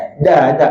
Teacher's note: makhraj huruf dal hujung lidah letak belakang gigi atas · Kalau ada angin sikit, adjust sampai tak ada angin. Itu makhraj dal. Da. Tapi masa kita sebut da tu, tetap jaga pangkal lidah supaya turun.